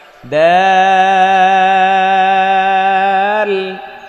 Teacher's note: জিব্বার আগা সামনের উপরে দুই দাঁতের গোড়ায় লাগিয়ে, দাল। dal, তারপর এটা নরম, দাল।